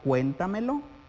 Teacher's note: Vemos que está en la anterior a la antepenúltima sílaba. Es decir, que después de la sílaba tónica habrá tres sílabas átonas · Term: sobreesdrújula